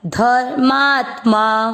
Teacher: र आधा है, त आधा है। आधे अक्षर को पूरा नहीं करना है, मतलब उसमें अमिक्स नहीं करना।